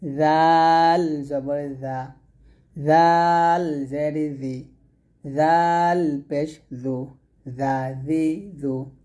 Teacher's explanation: জিহ্বার আগা সামনের উপরের দুই দাঁতের আগার সঙ্গে লাগিয়ে জালটা পাতলা উচ্চারণ করবেন